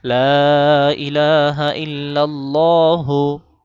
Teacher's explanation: লা তিন আলিফ টান ইলাহা ইলাহতে এক আলিফ